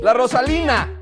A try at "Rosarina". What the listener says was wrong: Rosarina. No, no, no, con R, Rosarina. La Rosarina.